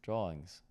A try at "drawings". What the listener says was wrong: Do you know when you're not focused on saying it, you say drawlings.